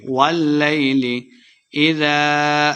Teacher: واللیل لمبا نہیں کریں گے، لام مشدد ہے، واو کو لام کے ساتھ ملا کے پڑھیں گے